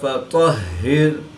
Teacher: طا حروف مستعلیہ میں سے ہے تو اس کو پر یعنی موٹا پڑھیں گے